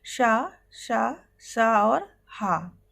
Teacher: इनको बोलते समय आप देखेंगे कि मुख पूरा नहीं खुलता और वायु घर्षण के साथ बाहर निकलती है